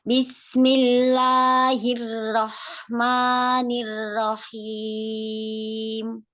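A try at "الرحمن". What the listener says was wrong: Hati-hati rohnya seperti terdengar cadel ya. Sedikit takrirnya rasakan. Karena takrirnya ini menyeimbangkan ya supaya rohnya tidak terlalu banget tapi juga tidak terlalu hilang ya. Ar-Rah.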